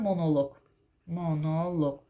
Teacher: Amma cansız əşya bildirsə, məsələn, yazıram monoloq, monoloq, vurğu loqa düşəcək.